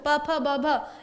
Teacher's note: ये हो गया ओष्ठ। प फ ब भ इनका उच्चारण स्थान कहां से होता है? ओष्ठ से होता है।